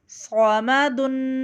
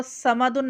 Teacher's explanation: صومدن اس کو سمدن نہیں پڑھیں گے کیونکہ یہاں سین کی آواز نہیں، ہمیں صاد کی آواز نکالنی ہے اور صاد کو موٹا پڑھتے ہیں. صاد زبر صا میم زبر ما صوما دال دو پیش دن صومدن آگے وف صومد.